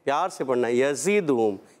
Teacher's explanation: یزد، زا سیٹی سے ادا کریں گے اور سختی نہیں کریں گے، بعض بچے سختی کریں، یزدہم، یزدہم، ایسے نہیں پڑھنا، یزدہم، پیار سے پڑھنا ہے، یزدہم۔